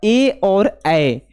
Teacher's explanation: ए और ऐ का उच्चारण जो है कहां से होता है? कंठ और तालु दोनों से। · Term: कंठ तालव्य